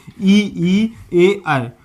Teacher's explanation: तो जिसमें जीभ के आगे वाला भाग काम करता है उन्हें कौन सा स्वर कहेंगे? अग्र स्वर।